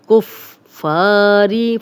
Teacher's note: بالکفاری، بل یہ الف نہیں پڑھا جائے گا، با کی زیر لام سے ملے گی. کفاری فا کو 2 بار پڑھیں گے، کاف کی پیش کے ساتھ اور پھر فا اپنی زبر کے ساتھ پڑھا جائے گا. اور الف مدہ بھی ہے، 2 حرکات لمبا کریں گے، خالی الف، فا پہ زبر.